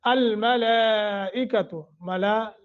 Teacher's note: ملا لام کے اوپر مد متصل ہے اور لمبا کریں گے ، ھذا یومکم الذی، دی حروف مدہ تھوڑا سا کھینچیں گے،